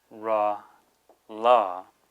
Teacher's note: the first two sounds are level in tone so just quite like English